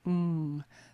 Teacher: The ng, the ng sound at the back of the throat